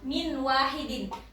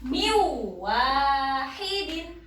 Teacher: jadi harus memasukkan nunnya ini dimasukkan ke waw. Hampir tidak dibaca. Jadi miu wahidin. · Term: idgham bihuna